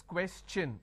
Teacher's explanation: When I have the word question, the TION becomes ch n.